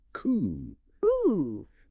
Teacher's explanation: The final 2 letters are completely silent, leaving a single closed-off vowel sound.